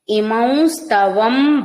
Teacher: ఇమౌం అన్నప్పుడు నాసిక ద్వారా వకారం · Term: అనుస్వారం